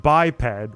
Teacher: The stress is on the first syllable and the e stays short like egg.